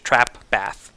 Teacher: Now the bath set is exactly the same for American speakers as the trap. Bath, trap, same exact vowel.